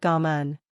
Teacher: When pronounced correctly, come on will sound like gauhm. The auh portion of the first word is sounded out in a rising, then falling voice.